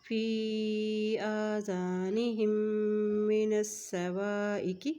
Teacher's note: فی کو لمبا کرتے ہوئے پڑھیں گے کیونکہ فی کے اوپر مد ہے، الف کے اوپر کھڑی زبر ہے، اس کو ایک حرکت پڑھیں گے اور خالی الف سے پہلے اگر زبر آ جاتی ہے تو اس کو بھی ایک حرکت پڑھا جائے گا۔